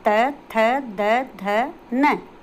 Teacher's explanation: अब आता है हमारा दंत, जो कि हमारे दांतों से, हमारी जो जीभ है वो दांतों से टकराती है, दांतों से टच होती है, वहाँ से हमारे ये बोले जाते हैं जैसे त थ द ध न।